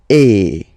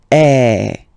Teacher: the sound is really open, and normally your mouth should be opened a little bit more than with the accent aigu as well. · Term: accent grave